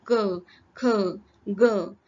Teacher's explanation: असतं काही वर्णांचा उच्चारण स्थान कंठ असत म्हणजे आपण जर बघितलं क ख ग तर यांचा उच्चारण कंठामधून होतं